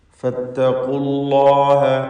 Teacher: ഫത്തഖൂ എന്നതിലെ വാവ് ഇൽതിഖാഉ സാക്കിനീൻ പരിഹരിക്കാൻ വേണ്ടി ഒഴിവാക്കുന്നു. അല്ലാഹ് എന്ന ഇസ്മുൽ ജലാലയിലെ ലാമിനെ തഫ്ഖീം ചെയ്ത് തടിപ്പിക്കണം